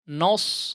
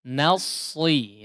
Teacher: Huruf nunnya jangan sudah terpengaruh dengan sod ya. Jadi seperti nos tidak ya.